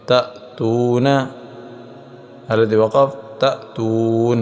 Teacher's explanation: واو ساکن سے پہلے ہم نے دیکھا پیش ہے، پیچھے ہم نے تختی پڑھی تھی تختی نمبر 8 کہ واو ساکن سے پہلے پیش آ جائے تو اسے واو مدہ کہتے ہیں، اور واو مدہ کو ایک الف کے برابر لمبا کرتے ہیں